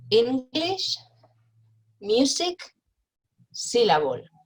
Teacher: nouns with more than one syllable, it's the first syllable that's accented, that's stressed.